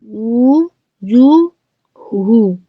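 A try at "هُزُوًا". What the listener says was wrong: একদম হু না হুন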